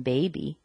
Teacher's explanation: I put my lips together I use my voice I let a little air come out between the lips and I make the sound B